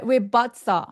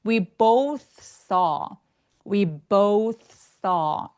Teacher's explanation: 해서 both는 생각보다 진짜 발음하기 어려운데요 th 부분에서 혀를 또 살짝 내밀어서 바람소리가 좀 느껴줘야 돼요